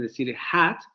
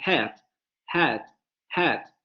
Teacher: En lugar de pronunciar esa palabra con la vocal media abierta anterior no labializada, la van a pronunciar con la vocal semiabierta anterior no labializada. Entonces lo que hacen es cerrar un poco la vocal, adelantarla un poco en términos de la articulación. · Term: adelantamiento